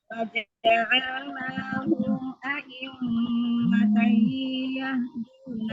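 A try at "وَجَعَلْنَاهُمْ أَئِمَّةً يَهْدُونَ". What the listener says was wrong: Sempurnakan lagi ini tasdidnya. Sempurnakan dulu. Waja'alnahum a'immatan yahduna bi amrina.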